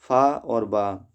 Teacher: दंतोष्ठ से उच्चारित होने वाले व्यंजन हैं फा और बा।